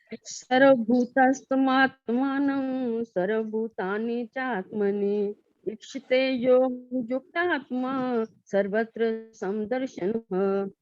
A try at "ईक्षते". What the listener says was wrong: ईक्षते जहाँ बोलते हो ना, ईक्षते, ई की आवाज लगती है। हाँ जी, ईक्षते।